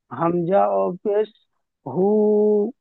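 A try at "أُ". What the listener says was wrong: হামজা ও পেশ হু হয় না, উ।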